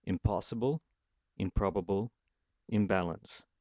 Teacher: Instead of a n sound, it's become an sound, a bilabial sound. The dental n, or the alveolar n, is now changed to a bilabial sound. · The bilabial sound of the p or b that follows the suffix is assimilated to the consonant at the end of the suffix. So when the lips come together to form the p or b sounds on possible, probable, or balance, that kind of changes the sound of the previous letter.